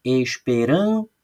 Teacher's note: quando eu falo esperança, eu falo mais alto a sílaba rã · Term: sílaba tônica